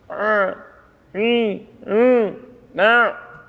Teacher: Sedikit peringatan untuk masalah huruf ain ini, ya. Dia tidak keluar dari hidung.